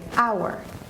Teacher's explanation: But the sound you make when you say that word is a vowel sound. You say hour, because the H here in this case is mute